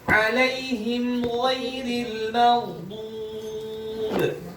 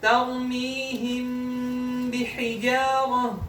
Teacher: Nah, perbedaannya di durasi gunnah, tingkatan gunnahnya berbeda. Kalau idhar syafawi itu gunnah naqisah, kalau ikhfa syafawi kamilah.